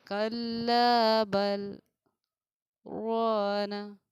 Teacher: وقفہ سے تھوڑی زیادہ دیر آپ کو سکتہ میں ٹھہرنا ہے